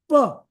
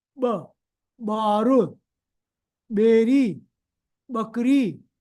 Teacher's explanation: Now you say ba, what you are doing is opening your lips but sucking the air in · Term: special Sindhi sound